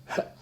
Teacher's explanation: And they shut like this, and when you breathe, they go, and then I go, and what I get is a kind of glottal. It's a click of my chords.